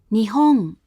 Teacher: When there's no following sound, the hatsuon is said as a voiced uvular nasal